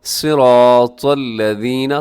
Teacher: तो को अपने मोटा पढ़ना है, सौद को भी मोटा पढ़ना है।